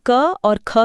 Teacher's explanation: अगर बोलते समय हाथ को मुंह के ठीक सामने रखा जाए तो क और ख के बीच हवा के दबाव का ये भारी अंतर त्वचा पर स्पष्ट रूप से महसूस किया जा सकता है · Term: महाप्राण